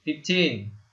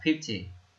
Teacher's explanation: Đấy, và đó cũng là cách phân biệt giữa 15 và 50. Bởi vì khi mà chúng ta đọc 15 thì cái trọng âm nó nhấn vào từ tin, còn khi mà chúng ta đọc là 50 thì trọng âm nó lại nhấn vào cái âm đầu tiên